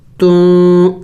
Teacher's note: اخفا یعنی ناک میں آواز چھپائیں گے، نون کی آواز کو ہم نے چھپانا ہوگا